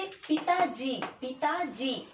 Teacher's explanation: ता में है, ता पर बलाघात है